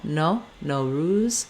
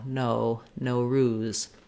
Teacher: In American, you may hear more of a length and diphthongization of that O